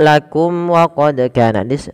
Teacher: mim mati bertemu waw, ada izhar syafawi, yaitu mimnya harus dijelaskan